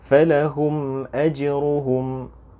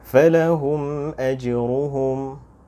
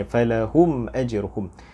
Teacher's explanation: Seperti yang diberitahu di istilah tadi, kita harus menzahirkan bacaan mim yang bertanda sukun tanpa kita mendengungkannya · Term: izhar syafawi